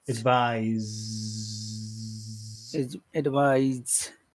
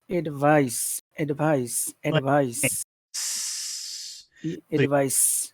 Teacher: it has the vibration Z that makes the vowel sound longer